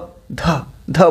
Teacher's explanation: ध बोलने में ज्यादा एनर्जी लगेगी ख घ में भी ज्यादा लगेगी तो वो महाप्राण है